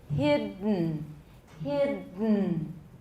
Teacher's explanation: So say hid, but then don't let your tongue down, and then push the air back so it comes out through your nose, and then release the n. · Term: nasal plosion